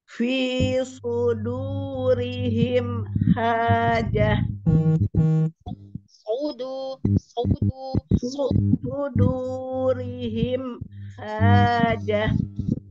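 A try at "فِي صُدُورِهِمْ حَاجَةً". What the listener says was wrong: Soalnya belum tebal tapi dahnya yang menebal.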